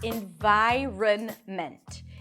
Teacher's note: The first syllable is in, lacks I, and then an N, in. Then vi, a V sound and the long I as in my. That's also the primary stress.